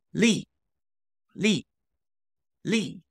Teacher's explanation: that is fourth tone and falling